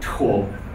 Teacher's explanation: the T in Navajo is not aspirated like in English, it's velarized. The it comes from the back of the throat.